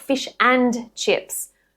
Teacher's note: This is just where a word ends in nd or nd and the next word starts with a consonant sound. The d simply just drops off when it comes after an n and the next word begins with a consonant sound. The n then links smoothly into whatever comes next.